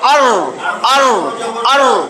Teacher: আর দেখেন তালুতে যায় লাগছে এবং একটা কম্পন হইতেছে